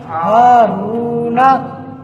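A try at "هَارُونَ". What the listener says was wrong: ہا کو بھی تھوڑا سا لمبا کریں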